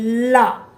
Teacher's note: अब है ये पार्श्विक व्यंजन, जिसके उच्चारण में जीभ का अगला भाग मसूड़ों को छूता है